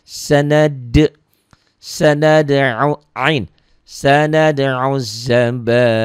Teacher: Karena dalnya qalqalah sugro, qalqalah kecil ya. Karena hurufnya sudah mati.